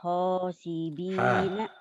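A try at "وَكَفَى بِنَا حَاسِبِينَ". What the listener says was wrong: bukan ho ha. Wa kafa bina hasibina.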